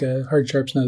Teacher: These 3 stressed syllables right after each other gives a nice sound there.